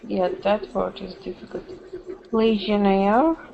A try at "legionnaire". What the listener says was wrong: There you go. One more time.